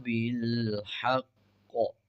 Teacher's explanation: شد ہے، مضبوطی سے قاف کو ادا کریں گے۔